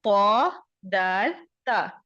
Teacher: زبان کی نوک جب ثنایا علیا یعنی سامنے کے دو دانتوں کی جڑ سے لگے تو پھر یہ حرف ادا ہوتا ہے